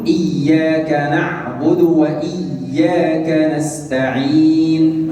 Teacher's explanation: لا أبالغ فيها حتى لا يتولد منها واو. Saya tidak berlebihan dalam mengucapkan yang berharakat dhammah ini supaya tidak datang padanya huruf waw. فأنطق دال عليها ضمة فقط.